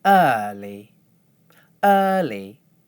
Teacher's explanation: when I do it the right way, I hold one stable pitch for the stressed syllable. When I do it the wrong way, the pitch descends.